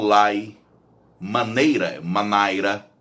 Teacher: em Portugal, eles têm algumas vogais diferentes das nossas. Por exemplo, eles têm um A misturado com E. Quando eles falam lei, eles falam lai, maneira, manaira.